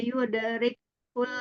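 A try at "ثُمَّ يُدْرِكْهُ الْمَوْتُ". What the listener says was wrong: summa yudrik hul. Hul, jangan kul. Agak yudrik hul. Jadi kayak ke kul daripada hul.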